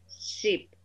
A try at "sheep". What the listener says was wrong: Sheep. Yes, and if you make the E sound longer, instead of sheep, say sheep, it will sound more correct because that's the difference between sheep and ship.